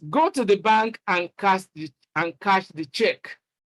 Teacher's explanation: Is a definite instruction, and it uses the falling tune.